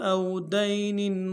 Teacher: واو لین بغیر کھینچے پڑیں گے